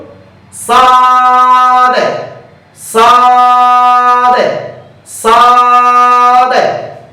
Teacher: এরপর হরফটি লক্ষ্য করুন সাদ জিহ্বার আগার সামনের নিচে দুই দাঁতের আগার সঙ্গে লাগিয়ে সাদ হরফটি উচ্চারিত হয়। সাদ হরফটি পড়ার সময় আওয়াজ শক্ত করে পড়বেন, মোটা করে পড়বেন এবং উপরের দিকে দাবিত হবে পড়ার সময়, হামস বাতাস চালু, আওয়াজও চালু।